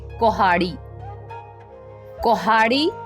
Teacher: ਪਹਿਲੇ ਅੱਖਰ ਤੋਂ ਸਾਊਂਡ ਜਿਹੜੀ ਆ ਔ ਦੀ ਆ ਰਹੀ ਆ